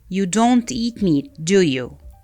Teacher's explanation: we usually pronounce question tags with falling intonation